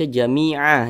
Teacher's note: Jamia dipanjangkan dua harakat